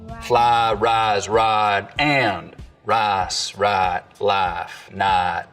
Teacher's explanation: In most of the Piney Woods belt, though, there's always been what we can describe as full price smoothing, where some Southerners smooth the diphthong in words like fly, rise, and ride, but use a diphthong in rice and right.